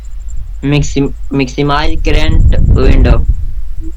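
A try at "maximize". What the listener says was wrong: मैक्सिमाइज करंट विंडो सही है, बट मिक्सिमाइज नहीं पढ़ते, मैक्सिमाइज पढ़ते हैं।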